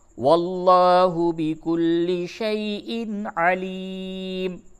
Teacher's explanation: تنوین کے بعد عین ہے، اظہار ہوگا